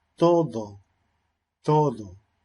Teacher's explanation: en chile al parecer también es frecuente que se ocurra de forma inter dental es decir poniendo la punta de la lengua entre medio de los dientes